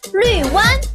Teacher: 绿 fourth tone, 湾 first tone.